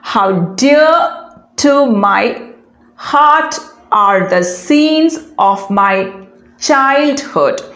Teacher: followed by a stress syllable followed by an unstressed syllable so it's a three syllable metrical foot with unstressed stressed unstressed pattern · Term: amphibrachic foot